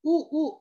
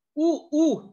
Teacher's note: खालच्या व वरच्या ओठांचा उपयोग करून वर्ण आपण उच्चारतो त्यांना काय म्हणतात, औष्ठ्य वर्ण म्हणतात